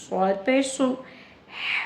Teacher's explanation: صاد whistling sound کے ساتھ ہی ہوگا، it is same as the سین is, the difference is only کہ ہم نے صاد کو پر پڑھنا ہے، موٹا پڑھنا ہے